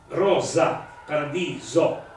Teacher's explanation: scrivo rosa e la pronuncerò con la S sonora